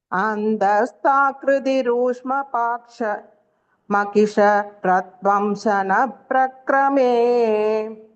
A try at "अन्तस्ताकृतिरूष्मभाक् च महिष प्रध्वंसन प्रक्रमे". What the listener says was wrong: அந்த சொல்லக்கூடாது அந்த, ஏன்னா அந்தனா இருட்டுன்னு ஆயிடும். எண்டுன்னு அர்த்தம். சோ மீனிங் த போடுங்க.